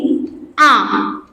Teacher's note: আ হচ্ছে কেন্দ্রীয় স্বরধ্বনি, এবং আ উচ্চারণের সময় জিভ কিন্তু নিচের দিকে, তাই এর নাম হচ্ছে নিম্ন।